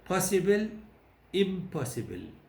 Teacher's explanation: so the N becomes more like that it becomes bilabial